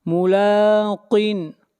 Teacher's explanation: لام کو کھینچ کر پڑھیں گے 1 الف کے برابر